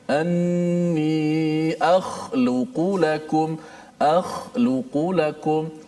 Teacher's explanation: Keluarnya daripada hujung halqum. Ini kita punya leher kita di hujung halqum yang berdekatan ataupun jiran kepada permulaan ataupun pangkal lidah kita. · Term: huruf kha